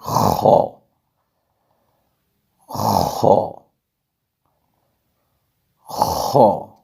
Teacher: آگے نقطے والا خا، یہ ہمیشہ پر پڑھا جائے گا، حروف مستعلیہ میں سے ہے، تو نقطے والا خا کو ہم موٹا کر کے خراٹہ دار آواز میں پڑھیں گے